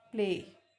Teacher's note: L is partially devoiced after voiceless P.